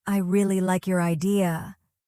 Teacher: The emphasis on your shows you're giving credit.